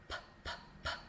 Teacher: Unvoiced sound, so no vibration in my throat, p, p, p. Like a B, but I can whisper it if it's hard for me to find the sound.